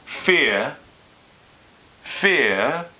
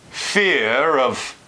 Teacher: Whereas FEAR all by itself the R would just drop